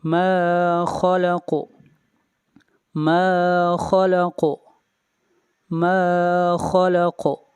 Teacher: خا حروف مستعلیہ میں سے ہے اور خا کو ہمیشہ موٹا پڑھا جاتا ہے. خلق اور قاف کے اوپر قلقلہ ہوگا.